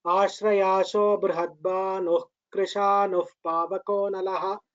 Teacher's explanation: What we do, we do not pronounce the visarga fully. We pronounce it as Krishanuh Pavakonalaha, like that. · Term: half visarga